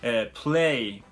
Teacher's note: 先ほどの▁P▁の後に、母音を入れない▁play▁というふうに、子音を、独立して発音する